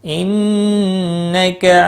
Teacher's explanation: نون مشدد پر غنہ ہوگا